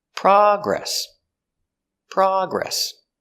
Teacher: the noun the stress is on the first syllable